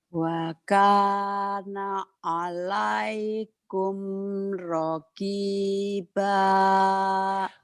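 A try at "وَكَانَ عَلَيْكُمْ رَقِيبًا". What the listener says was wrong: Raqiba. Agak tinggi Kak ujungnya ya.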